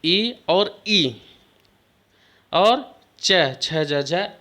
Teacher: ये तालव्य माने तालु से बोले जाते हैं